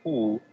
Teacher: la lengua sube y va hacia atrás. La cavidad oral se amplía en la parte de adelante, los labios se abocinan y el timbre es grave.